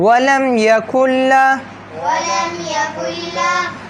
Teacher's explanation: لام موٹا نہیں ہوگا یہاں پہ لام ہمیشہ اللہ پہ موٹا ہوتا ہے